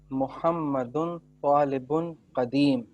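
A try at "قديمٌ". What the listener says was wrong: دیکھیں آخری دیکھیں قدیمن بولیے.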